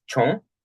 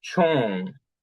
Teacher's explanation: woman in isolation is chon with low tone, but if we put something like a possessive, like her woman, the high tone or the floating high tone appears.